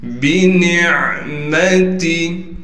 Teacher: بنعمتی، با کو بغیر کھینچے پڑھنا ہے، با کو باریک کر کے پڑھیں گے، نون کو عین سے ملائیں گے اس لیے کہ عین ساکن ہے، عین کو صاف کر کے گلے کے درمیان سے نکالیں گے، میم کو بغیر کھینچے پڑھیں گے۔